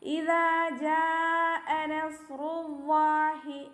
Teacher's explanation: ജാ അവിടെ ഇപ്പോൾ 4ഓ 5ഓ കൗണ്ട് നീട്ടുന്ന നിർബന്ധമാണ് കേട്ടോ. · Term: മദ് വാജിബ് മുത്തസിൽ